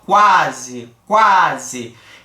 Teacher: Então a gente tem o u sendo a semivogal e o a como vogal e eu não tive obstrução nasal nenhuma eu falei normalmente o a fluiu aqui na minha pronúncia quase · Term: crescente